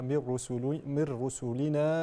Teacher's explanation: من رسلنا إدغام بغير غنة كما شرحنا